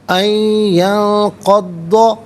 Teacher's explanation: یہاں پر بھی ناظرین یرملون کا قاعدہ اپلائی ہوگا، اور ینقض میں نون ساکن، اس کے بعد قاف حرف اخفا ہے تو نون ساکن کو اخفا کے ساتھ پڑھیں گے، یعنی ناک میں آواز لے جا کر گنگنانا، اسے اخفا کہتے ہیں